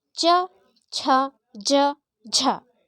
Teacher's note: आपकी जिह्वा जो है तालू से टकरा रही है, परंतु मुड़ नहीं रही है। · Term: तालव्य